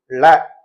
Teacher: இன்னும் கொஞ்சம் நாக்கு உள்ள மடிச்சு எடுத்தாதான் சிறப்புலகரம் வரும்